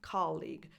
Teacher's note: the second syllable doesn't have a schwa as a vowel, is a tense E